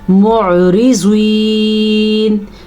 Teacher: इस आइन को भी आपने हलक से निकालना है और ज़ुआद को पुर पढ़ना है।